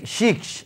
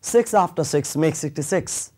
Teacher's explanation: প্রথম যে সাউন্ডটা আছে সেটা শীষের মত দুটো সাউন্ডই শীষের মত হবে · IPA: /s/